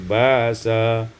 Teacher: ditukar hamzah dengan alif menjadi ba'sa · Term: ibdalul hamzati alifan